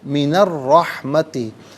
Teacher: را حرف شمسیہ ہے تو را کا ساؤنڈ ہوگا، لام کو ادا نہیں کیا جائے گا۔ من الرحمتی، را مشدد ہے، جماؤ کے ساتھ ادا کریں گے، را پر زبر ہے، را پر زبر یا پیش ہو تو را کو پر پڑھتے ہیں، زیر ہو تو باریک کر کے پڑھا جاتا ہے۔